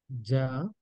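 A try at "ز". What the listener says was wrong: ఇది జ కాదు జెడ్ డబల్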